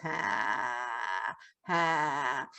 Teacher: you'll hear that she's grating on the vocal cords · she ended up with what we call is a vocal fry. So it's when your voice goes, ha, ha.